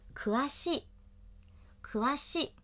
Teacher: 读成可哇西，可哇西，三调，低，高高，低